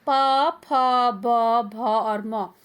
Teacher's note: ऊ, ऊ, प, फ, ब, भ और म इनका उच्चारण स्थान बच्चों ओठ है, और वर्ग का नाम है ओष्ठ्य, क्योंकि जब हम इनको बोलते हैं तो हमारे ओठ आपस में जुड़ते हैं